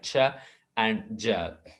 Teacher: a brief stopping the air stream with a obstructed release which causes some friction, these are called affricates. Occur at the beginning of the words cheap and jeep.